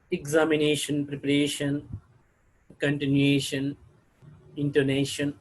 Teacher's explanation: word ending with ion have the primary accent on second syllable from the last second syllable from the last means examination preparation continuation intonation like